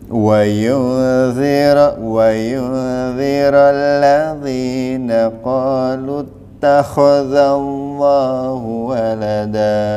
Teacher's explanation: kho-nya ada dahaknya. Harus ada, jangan kering.